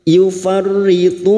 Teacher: Bertemunya mad dengan huruf hidup yang dibaca waqaf, mad arid li sukun, 4 harokat kita panjangkan